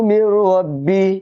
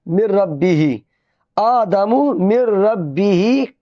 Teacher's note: यानी तशदीद से पहले अगर कोई अल्फाज हो, अगर उस पर जज़म हो, तो उससे पहले जो अल्फाज हो उसको छोड़ देंगे, और ये मीम है इसको डायरेक्ट रा से मिला देंगे